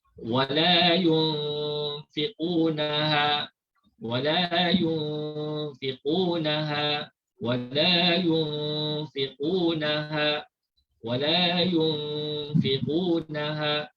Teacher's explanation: nun mati dibaca secara sembunyi ataupun dibaca secara tidak jelas ataupun dibaca secara samar-samar. Kemudian kita dengungkan dua harakat. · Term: ikhfa hakiki